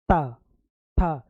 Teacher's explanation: तो ये ता था दा धा ना आपका कहलाएगा दंत, क्योंकि देखो जब भी हम लोग बोलेंगे ता था तो जो हमारी जीभ है ऊपर दांत में लगती है